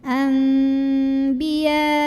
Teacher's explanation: Karena ada nun sukun yang bertemu dengan huruf ba, maka bunyi nun sukunnya dirubah jadi bunyi mim sukun. Jadi bukan an tapi am, dan kita dengungkan, tahan bunyi m-nya. · ada yang membacanya dengan merapatkan bibir ya, tapi rapatnya tidak menekan, lunak saja ya, itbaq syafatain. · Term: iqlab